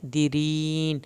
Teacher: आखिर में रा पतला पढ़ना है